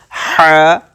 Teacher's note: یہ جو ہا ہے اس کو ہم بولتے ہیں بڑا ہا, from the centre of the throat, middle of the throat سے اس کو نکالیں گے ہا